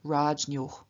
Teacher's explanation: In front of the Och, however, that is the genitive and locative dual ending and which begins with a vowel, we find exactly the same happening as in the singular, namely the N after the palatal J changes into palatal Nya, and so we get Rajnyoh. Then in the case of Atman, we get Atmabhyam, the weak stem, which would be Atman, does not appear as Atman in front of the ending that begins with a consonant, but as Atma, Atmabhyam.